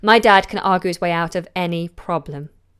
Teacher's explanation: A slight fall, actually, in intonation at the end.